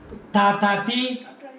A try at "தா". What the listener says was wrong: டா இல்ல டாவுக்கும் தாவுக்கும் உனக்கு வித்தியாசம் தெரிய மாட்டேங்கது தானா நாக்கு வெளிய வரணும்